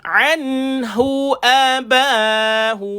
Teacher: An, matikan nun, jelaskan bunyi nun. Ada bacaan izhar halki, dijelaskan bunyi nun, tak payah dengung.